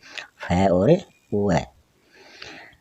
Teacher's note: दंतोष्ठ मतलब दांत और ओष्ठ, जिनको उच्चारित करते हैं तो दांत और ओष्ठों की सहायता ली जाती है